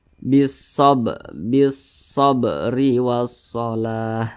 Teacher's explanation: maka huruf ba ini cara bacanya itu dipantulkan dan dia tergolong kepada qalqalah sugra atau qalqalah kecil karena berada di tengah kalimat, nah, atau di tengah bacaan seperti itu.